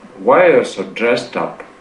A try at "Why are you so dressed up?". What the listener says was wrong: Lower your voice on the word up. Dressed up. Dressed up.